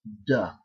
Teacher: you pronounce that final D as voiced. In other words, you use your vocal cords, and it's going to come out as duh.